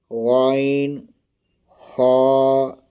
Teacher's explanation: اس طرح چوتھے حروف میں دو آتے ہیں، غین اور خا۔ پڑھنے کا طریقہ ہے حلق کے شروع سے جو منہ کی طرف ہے